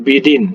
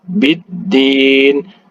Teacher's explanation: Kemudian dalnya, ya, bertasydid, ya, jadi ditahan. Biddin, jangan bidin, ya.